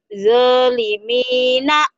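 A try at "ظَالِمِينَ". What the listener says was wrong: Zo-nya agak rapuh dikit. Zolimina.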